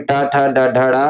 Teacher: टा वर्ग में टा, ठा, डा, ढा, डा, और इनका उच्चारण स्थान क्या होता है, मूर्धन्य होता है।